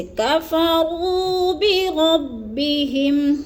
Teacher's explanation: کفروا کی را کو اور بربی کی را کو بھی ہم دونوں کو پر کر کے پڑھیں گے، موٹا کر کے